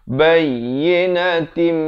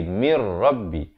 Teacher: Kalau tim itu idgham bi gunnah masuk beserta dengung. Mir pula masuk tanpa dengung.